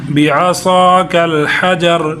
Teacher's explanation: فَقُلْنَا اضْرِب بِّعَصَاكَ الْحَجَرَ حجر، اب دیکھیں با کو با کے ساتھ ادغام ہوگا تو با ایک ہی پڑھی جا رہی، لیکن سختی کے ساتھ پڑھی جا رہی۔ فَقُلْنَا اضْرِب بِّعَصَاكَ، صاد کو موٹا کریں گے